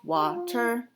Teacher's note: the first syllable wha is the stressed syllable is pronounced with more emphasis than the second syllable